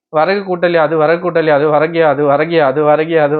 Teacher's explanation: முழுமையாக ஒரு மாத்திரை அளவில் ஒலிக்காமல் அரை மாத்திரை அளவாக குறைந்து ஒலிக்கிறது. அதுவும் முழுமையாக ஒலிக்கல. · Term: குற்றியல் இகரம்